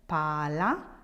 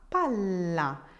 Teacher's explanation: It stays longer with the double L, and that's where you want to focus for the moment.